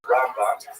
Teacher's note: Rambam is pronounced with the emphasis on the first syllable